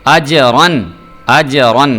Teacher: را کو دیکھیں میں پر کر کے پڑھ رہا ہوں